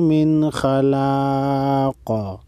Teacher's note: وقف کی صورت میں قاف ساکن پڑھیں گے اور قاف ساکن پر قلقلہ کریں گے، یعنی قاف کو ہلا کر پڑھیں گے